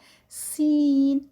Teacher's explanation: سین جو ہے وہ وسلنگ لیٹر ہے، سیٹی کی طرح اس کی آواز آتی ہے، اور اس میں بھی جو ہماری جو زبان ہے وہ اس کی جو آگے والا حصہ ہے وہ نیچے والے دانتوں کے اندر والے حصے پہ ادا جو ہے وہ لگتا ہے۔